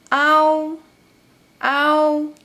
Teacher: And “ao” is “a” plus “u”, “ao”, “ao”.